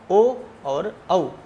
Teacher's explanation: कंठ और ओष्ठ को मिला करके जिनका उच्चारण किया जाता है वे स्वर हैं ओ और औ। इस प्रकार से इनका उच्चारण स्थान कंठ और ओष्ठ होता है। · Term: कंठोष्ठम